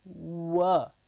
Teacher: there is really no obstruction when we say the W way the only thing that's happening is the lips are going forward becoming kind of around to say wha-wha exactly so were the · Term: approximant